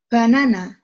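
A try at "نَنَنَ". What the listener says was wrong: Mana banana? Orang titiknya di atas semua.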